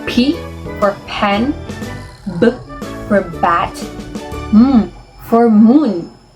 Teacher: It is produced using both lips together. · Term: bilabial